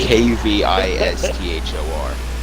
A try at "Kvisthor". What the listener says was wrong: Vistor. K is silent.